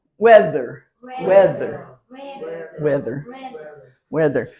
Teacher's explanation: the accent is on the first syllable